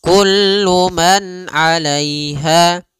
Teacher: Pada lafal kullu man di sini ada izhar halqi, yaitu suara nunnya dibaca dengan jelas ketika bertemu dengan huruf ain